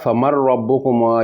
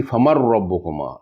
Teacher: نون ساکن تھی بعد راوا، جڑا ادغام تام نے دو لفظاں چی مکمل ادغام ہو سی۔ فمن نہ پڑھنے سی، فمن ربکما، نون نی آواز بالکل ختم ہوئی گی سی۔